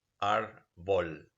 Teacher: But in Spanish, when Latin turned into Spanish, then a dissimilation process took place and the R remained the same, but the second R changed for another liquid sound